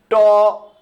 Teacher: তো আপনি আমার সাথে বলুন ট যখন আপনি ট বলছেন তখন আপনার জিহ্বাটা উপরে যে তালুর কাছাকাছি একটা জায়গা ওই জায়গাটায় মূর্ধা ওইটার নাম ওই জায়গাটায় চেপে বসতেছে কিনা